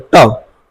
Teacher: मूर्धन्य मतलब होता है अगर हम ट बोलते हैं ट, तो हमारी जीभ जो है वो हल्की से बैंड हो जाती है, मुड़ती है, तब आवाज निकलता है, इसलिए इसे मूर्धन्य बोलते हैं, मुड़ जाती है इसलिए मूर्धन्य बोलते हैं।